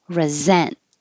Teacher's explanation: the verb resent the s sounds like a z